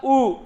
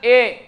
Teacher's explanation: अगर मैंने बोला उ तो होठ क्या होगा पूरा गोल होगा लेकिन मैंने बोला ए तो होठ गोल नहीं हुआ